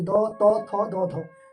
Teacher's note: चारटा दंत्य स्पर्श व्यंजन ध्वनि दंत्य स्पर्श देखो एटा दांत लागे बोली द त थ द